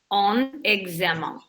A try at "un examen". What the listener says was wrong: No, you have to pronounce the N. So you have to join them together. So it's kind of like the consonant moves over to the next word.